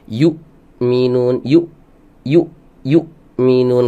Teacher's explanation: saat disukunkan dia tidak ngalir, tidak berhembus nafasnya. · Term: jahar